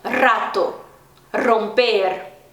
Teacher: Só que eles têm o R forte, como por exemplo em rato, que aí tem que vibrar, é tipo o nosso R fraco, só que mais vibrado. Não posso falar rato, que aí é o som do J em espanhol, ou em alguns casos do G, né?